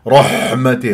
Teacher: والحاء رقيقه لطيفه مثل المحسنين